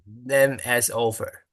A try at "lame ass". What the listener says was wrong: Make sure that A is long, right? Lame, lame, game, right? Game, lame, lame ass, lame ass.